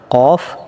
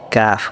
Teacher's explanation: কফটা হবে মোটা কাফটা হবে পাতলা